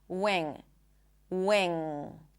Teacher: The second one is the NG sound. And as you can hear, I do not pop the G. Wing. There is no G sound.